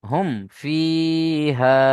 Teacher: ফা এসছে। তাই মিম সাকিনের আওয়াজকে বিনা গুন্নায় জাহির করে পড়তে হবে। একে ইজহারেশাফাবি বলে।